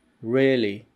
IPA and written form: ˈrɪəli (really)